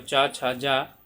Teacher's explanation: च छ जा ये क्या होता है आपका तालव्य होता है